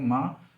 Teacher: माँ बोलने में हमारे दोनों होंठ, मतलब दोनों होंठ का मतलब लोअर लिप और अपर लिप दोनों यूज़ हो रहे हैं। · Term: बाइलेबियल